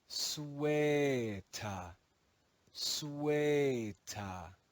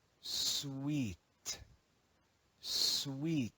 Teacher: In Middle English, this word was read as sueta, sueta. In modern English, the long eh changes to the sound E, and the final schwa is dropped.